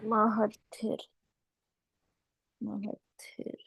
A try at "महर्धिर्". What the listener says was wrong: Actually इसमें र की भी आवाज आती है, MAHARDDHIR, ऐसे होता है ये, महरधिर।